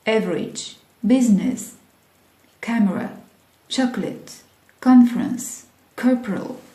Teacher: some most common words with vanishing second syllable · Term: vanishing syllables